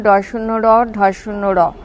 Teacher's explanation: যে ব্যঞ্জন ধ্বনির উচ্চারণের সময় জিহবা মূর্ধাকে তাড়িত করে তাকে তারণজাত ধ্বনি বলা হয় যেমন ড শূন্য র ঢ শূন্য